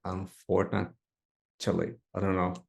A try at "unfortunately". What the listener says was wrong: No, again, you're adding a T sound. So let's try each syllable.